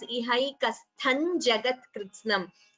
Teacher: anuswara followed by ja. You can combine the sandhi and chant it as Ihaikasthan Jagat Kritsnam.